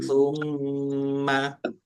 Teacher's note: Mim tasdid dibaca gunnah atau mendengung, ditahan biar tampak mendengungnya.